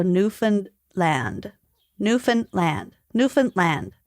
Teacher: there's supposed to be a slight guttural stop between New Found and land